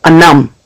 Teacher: for Wampanoag people, we're an N language, so where you hear that L, you now hear anum